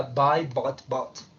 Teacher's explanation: Pero en americano va a sonar más como hacia una A, un intermedio entre la O y la A.